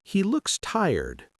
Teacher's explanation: Sure, if you say, "He looks tired," with a flat intonation, it's just a straightforward observation. But if you say, "He looks tired," with a rising intonation, it can sound like you're expressing concern or sympathy.